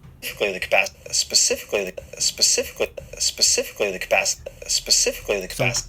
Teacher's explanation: And the second key is how he stresses the sounds. And here there are two stressed sounds. The first one would be specifically the C sound, and the second one will be the capacity, the pa sound.